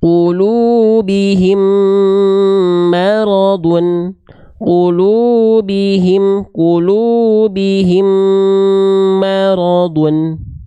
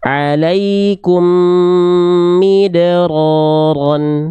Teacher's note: mim sukun yang pertama dileburkan ke mim yang kedua lalu ditahan 2 harokat. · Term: idgham mimi